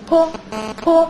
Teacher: 双唇的一种爆破音 泼泼，是不是也有气流也有怎么样两个唇的香喷，这